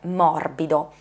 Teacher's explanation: La parola morbido già ha tutto un altro effetto fonetico perché è composta da consonanti sonore, sia la M che la B che la D sono consonanti sonore, anche laddove ci sono delle occlusive, come la B in questo caso, però è un'occlusiva sonora, quindi è un po' vibrata, è un po' morbida, appunto, genera un effetto che è soffice.